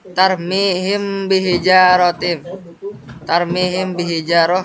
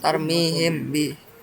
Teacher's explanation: Jadi di sini terdengar suara samar antara mim dan ba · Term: ikhfa syafawi